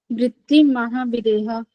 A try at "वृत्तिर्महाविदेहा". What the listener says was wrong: वृत्तिर्महाविदेह, माँ के ऊपर रहे है ना, इसको भी बोलना पड़ेगा। वृत्तिर्महाविदेह